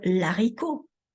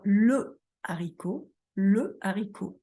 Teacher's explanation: ce sont deux voyelles qui se succèdent, mais qu'on ne peut pas nouer entre elles sur un plan phonétique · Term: hiatus